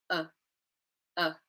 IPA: ə